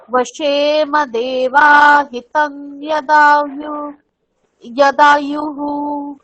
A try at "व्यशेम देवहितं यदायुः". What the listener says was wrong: দেখুন, দেবা তো নেই, আপনি বাটাকে কেন টানলেন? व्यशेम देवहितं यदायुः